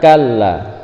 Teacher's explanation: Ditekan suaranya dan dipanjangkan karena hukumnya matobi.